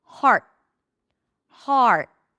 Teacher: And then for the T, you just block the air. You bring the tip of the tongue up.